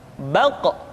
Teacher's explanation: Qa, qi, qu, balq. Diucapkan dengan suara yang tebal dan dalam posisi sukun, maka terdengar pantulan suara.